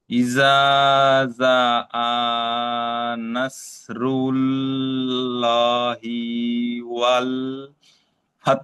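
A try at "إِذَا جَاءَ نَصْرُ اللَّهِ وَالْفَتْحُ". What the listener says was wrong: মাশাআল্লাহ, ঠিক আছে ঠিক আছে, সুন্দর হয়েছে।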